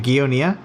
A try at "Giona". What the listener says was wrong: I don't really care, but it's Giona. 2 syllables.